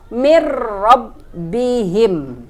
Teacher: Nun sukun bertemu dengan ro, idgham bila gunnah. Nun sukunnya tidak dibaca, kita langsung ke huruf ro yaitu mir rabbihim.